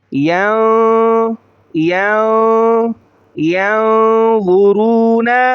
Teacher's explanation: یا کو نون کے ساتھ ملاتے ہوئے ناک میں آواز لے جائیں گے، اسے غنہ کہا جاتا ہے۔